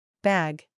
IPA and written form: bæɡ (Bag)